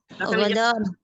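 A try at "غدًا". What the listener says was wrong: Bukan godon. Pakai dal. ya beda artinya kalau godon. Godan.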